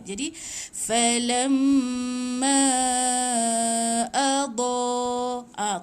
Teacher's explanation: Tengok pula sebelum ombak baris apa? Baris mim tu, baris atas ma. Jadi ma tu yang kena 4 atau 5 harakat.